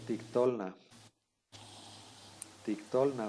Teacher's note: vean aquí el acento está en la o